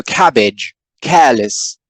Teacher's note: in a more modern version of general british english we pronounce the final syllable with a schwa